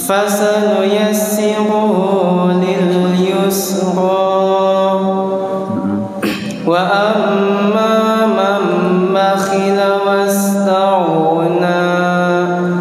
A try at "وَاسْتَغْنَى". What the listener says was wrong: تَغْنَى Iya, jangan ditelan, jangan ain terus.